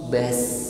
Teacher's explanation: Ketika disukun pun tetap terasa tebal. Beda halnya ketika kita mengucapkan huruf sin sukun yang lidahnya istifal di bawah. Bas ringan dan tipis bunyinya.